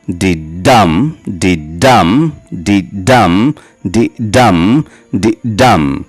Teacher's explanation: অর্থাৎ একটা লাইনে 5টা মিটার থাকবে, 5টা ফুট থাকবে, এবং সেই 5টা ফুটের প্রত্যেক প্রথম সিলেবলটি আনস্ট্রেসড হবে এবং দ্বিতীয় সিলেবলটি স্ট্রেসড হবে। তাহলেই আমরা সেই লাইনটিকে বলবো আয়াম্বিক পেন্টামিটার।